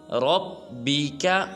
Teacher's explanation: را کو پر ادا کریں گے